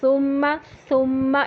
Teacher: اس کا ہمس اس کو واضح کرتا ہے کہ یہ سا ہے